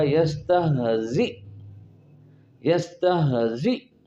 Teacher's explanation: تو چونکہ وقف رسم کے تابع ہے تو اس کے مطابق جو آخر میں حمزہ آئے اس کو جھٹکے کے ساتھ روکنا ہوتا ہے